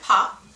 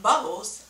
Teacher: it used both of my lips when I had to pronounce them